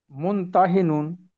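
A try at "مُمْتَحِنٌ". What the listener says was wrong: মুম, মুম, মুন না। মুমতাহিনুন।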